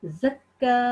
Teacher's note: کیف فتح اشبائی کے ساتھ 2 سیکنڈ لمبا پڑھیں گے